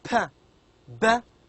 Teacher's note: these sounds are formed by using both upper and lower lips